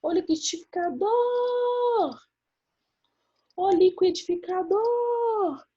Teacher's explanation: O dor, ele vai ficar mais tempo, então ele vai ser a minha sílaba tônica